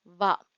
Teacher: மேற்பல்லும் கீழ் இதழும் இய பிறக்கும் எழுத்துக்கள்